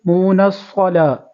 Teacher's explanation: نون کو صاد کے ساتھ ملائیں گے، صاد کو پر کریں گے